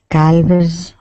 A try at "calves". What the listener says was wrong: Now that L is going to be silent.